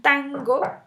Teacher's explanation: Mientras que en tango, digan tango, esa N se produce entre el velo y la nariz. Ajá, el aire sale por la nariz, pero la producimos con el velo, a diferencia de ana, que ana está perfectamente ubicada en los alvéolos.